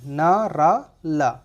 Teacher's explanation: हमारी जो जबान का अगला भाग है वो ऊपर मसूड़े को स्पर्श करेगा, ऊपर वाले मसूड़े। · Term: बत्स्य व्यंजन